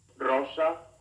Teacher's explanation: the letter r at the beginning of a word is trilled